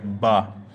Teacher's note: দুটা ঠোঁট একত্রিত করে উচ্চারণ হবে বা